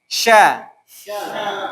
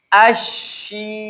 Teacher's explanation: Tengah lidah bertemu dengan langit-langit.